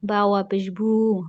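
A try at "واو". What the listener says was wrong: বাস বাস, আপনি হচ্ছে ওয়া বলতেছেন, উচ্চারণটা হবে ওয়াও। ওয়াও।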